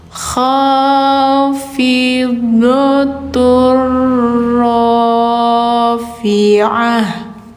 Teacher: Ini bacanya ha karena di akhir ya, tak bulat ketika sukun jadi ha.